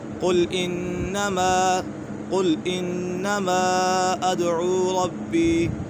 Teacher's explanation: مد منفصل کو 2.5 الف کے برابر کھینچ کر پڑھیں گے